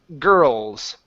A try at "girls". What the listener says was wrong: Yeah, it is hard, but don't flatten it. The reason why you're flattening it is because of the R.